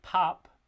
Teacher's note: we have the aspirated stop at the beginning and the unaspirated stop at the end. So we have voiceless stops being aspirated at the beginnings of words and unaspirated at the ends of words.